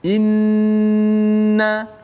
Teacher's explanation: Maksud dia dia kuat tu, hujung lidah kita itu letak betul-betul pada makhraj nun dan lama kat situ. Inna kan lama. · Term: nun yang bersabdu